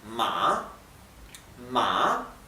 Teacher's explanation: significa que la pronunciación baja y sube · la a baja y sube la pronunciación